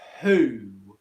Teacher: with the word who make sure you're not having friction in your throat okay it's not that ku it's who all right next so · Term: long oo